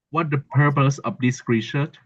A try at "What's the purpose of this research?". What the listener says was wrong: Yeah, so you can do the what's the with a ts. What's the purpose of this research? So now, Chi, you're in Taiwan, so those ts and are both Chinese Mandarin sounds.